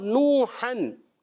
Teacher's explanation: और नूहन, नून वाव पेश नू, वाव मद्दा, वाव साइन पहले पेश आ रहा है, वाव मद्दा होगा, एक अलिफ खींच कर अदा करेंगे। और यहाँ 2 ज़बर की तनवीन है, हन हन, तो ये अलिफ भी लिखा होता है।